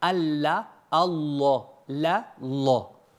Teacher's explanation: C'est le fait de faire un la qui soit grave. Comment je fais pour faire un la qui soit grave? Je creuse ma langue.